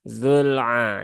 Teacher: dia sifatnya bukan syidah tetapi sifatnya tawasud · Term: lam sukun